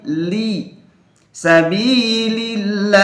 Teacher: jangan sampai ada e le le le tapi Li harus tipis